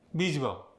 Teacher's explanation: Notice on that word, visible, we lost the V.